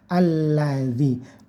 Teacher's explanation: Jadi ini dibaca a ya. Alladzi, lamnya ditasdid, ditekan saja.